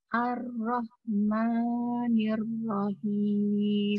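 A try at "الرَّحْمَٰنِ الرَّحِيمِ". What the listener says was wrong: Rah juga. Rah seperti bis. Ya, rah. Dikeluarkan anginnya. Kemudian ma-nya 2 harokat saja, Bu ya. Ar-Rahmanir-Rahim. Ar-Rahmanir-Rahim.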